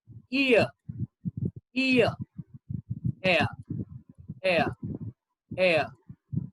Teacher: your tongue is in a very central position when you pronounce these two sounds